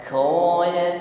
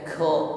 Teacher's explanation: Tidak disertai dengan nafas yang berhembus.